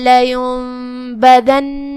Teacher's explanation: یہاں حکم ہے اقلاب، جو کہ اقلاب کا معنی ہے بدل دینا یا پلٹ دینا. لہذا ہم یہ نون کو میم میں بدل کے غنہ کے ساتھ یہ حکم کو ادا کریں گے. لینبذن نون پہ تشدید ہے، لہذا دو حرف کے برابر ہمیں نون کو پڑھنا ہے.